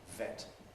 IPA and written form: vet (vet)